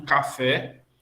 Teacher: o fé, que é grau 3, sílaba tônica de intensidade